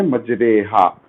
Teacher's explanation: مجریہا پڑھنے کی وجہ سے را باریک ہی پڑھا جائے گا، موٹا نہیں پڑھا جائے گا۔ · امالہ سے مراد الف اور یا کے درمیانی آواز والی آواز سے پڑھنا، جیسے ہم اردو میں پڑھتے ہیں ریل، ستارے، یا ہمارے، تمہارے، اسی طرح سے یہاں ایک مقام پر را کو آپ پڑھیں گے مجریہا کی جگہ مجریہا، ایک ہی جگہ ہے۔